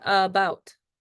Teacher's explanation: bout is stressed so it's louder and longer